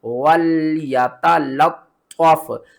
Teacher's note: طا کو ہم نے دو بار پڑھنا ہے، ایک بار لام کے ساتھ ملانا ہے اور دوسری بار فا کے ساتھ ملانا ہے